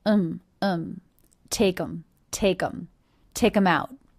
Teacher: Did you notice reduced the word them to the schwa and the M sound?